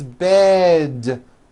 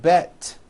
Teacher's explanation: Bed has a voiced D ending. It's not bet with an unvoiced T, it's bed with a voiced D.